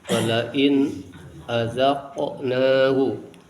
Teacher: [bernyanyi] Walain dibaca jelas. Nun mati menghadapi [berdehem] salah satu huruf halaq. Huruf yang keluar dari tenggorokan yakni Hamzah.